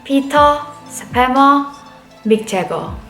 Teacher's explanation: But if your name ends with an ER, Peter, Spammer, Mick Jagger, all this ER becomes O sound.